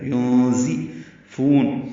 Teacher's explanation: وجہ سے اخفا ہوا ہے، زا کے نیچے زیر ہے، ينزفون زا کو تیز صفیر کی آواز سے ادا کرنا ہے